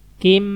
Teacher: Ada kasrotain ketemu mim. Tanwin ketemu mim berarti ditahan.